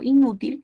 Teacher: Entonces, cuando yo pronuncio, por ejemplo, inútil, en esta palabra, la segunda es la que lleva la mayor fuerza de voz